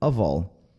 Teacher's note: esse F aqui, ele não tem som de F, ele tem som de V. Então, quando a gente junta com all, vira of all.